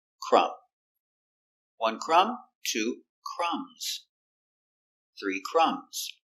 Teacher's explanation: the B is silent you have MB at the end